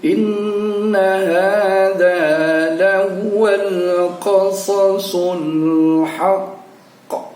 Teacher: Ada suara qa yang keluar pada ujungnya, itu juga termasuk kategori qalqalah, namanya qalqalah kubro. Jadi seluruh tanda baca yang di ujungnya ada tanda wakaf, yang huruf qalqalah itu ada 5, pada ujungnya kita wakafkan dibaca dengan qalqalah kubro, yaitu qalqalah yang besar.